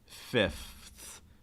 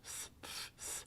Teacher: if the goal is to sound standard you really do need to pronounce the f as well as the th you can't just say oh I'm just going to do one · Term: Conant cluster